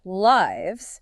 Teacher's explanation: Short I sound, like bit, and it ends with a Z sound.